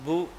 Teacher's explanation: جو مدہ ہے اس کو ہم نے گھٹا دیا، جو مدہ ہے اس کو ہم نے گھٹا دیا، تو یہ بھی ایک ہماری غلطی ہے جس کو ہم کہتے ہیں لحن جلی۔ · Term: گھٹا دینا